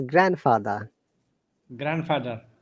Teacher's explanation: Anything that has got the word grand with that word together, D is silent.